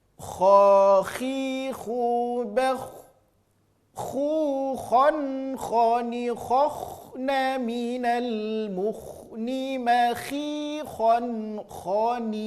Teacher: Kha, tidak, tapi kho. Bunyi vokal huruf tebal adalah huruf o. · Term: huruf kho